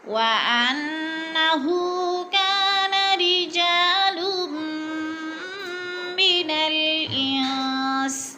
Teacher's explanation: غنہ کریں گے، ناک میں آواز لے جائیں گے اور ہو کو ہم نے تھوڑا سا کھینچ کر پڑھنا ہے